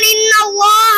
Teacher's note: আল্লাহ শব্দের লাম মুসাদ্দাদের পূর্বে জবর অথবা পেশ থাকে তাহলে আল্লাহর লামকে পুর অর্থাৎ ল পড়তে হয়